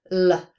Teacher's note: voiced alveolar lateral approximant